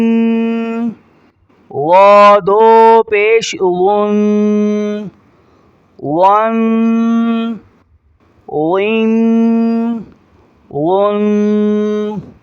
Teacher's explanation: تنوین کو ادا کرتے وقت ناک میں آواز لے جائیں گے جسے ہم غنہ کہتے ہیں